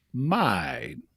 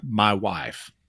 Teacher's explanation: it's sort of a diphthong between the ah sound and the I sound in regular English · It's more like mine. So it has part of the ah sound and part of the I sound together. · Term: Ozark I sound